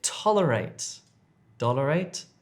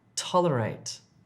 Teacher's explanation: D is more at the back, t, t, t, t, t is more at the front. It's a sharper sound.